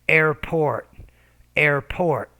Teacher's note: So the P sound you're not pronouncing with enough air.